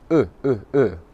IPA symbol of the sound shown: ʊ